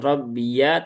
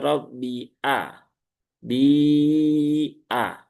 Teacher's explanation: Mad jaiz munfasil. Rabbi a ya ingat hamzahnya harus jelas jangan rbi ya. Bukan rabbiya tapi rabbia bi a.